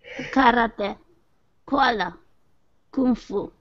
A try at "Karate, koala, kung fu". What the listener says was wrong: Perfecto, muy bien, perfecto.